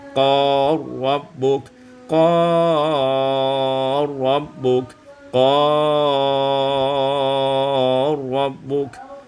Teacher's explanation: Pada ayat yang ke-30, qala rabbuk, idghamul lam fil ra, diidghamkan lam pada ra menjadi qala rabbuk, qala rabbuk, qala rabbuk.